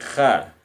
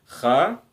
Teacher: Kha ingat makhrajnya di ujung di tenggorokan sini. Kha. Jadi huruf-huruf khalqi, huruf-huruf tenggorokan ya.